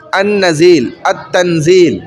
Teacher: اب دیکھیں ان نزیل، تو اب چونکہ لام کے بعد نون آ گیا، اب نون یہاں پر دیکھیں نہیں ہے تو مدغم ہو گیا، وہ ظاہر نہیں ہوا، لام ظاہر نہیں ہوا۔